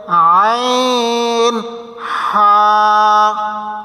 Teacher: দুই নম্বর মাখরাজ হলকের মধ্যখান হইতে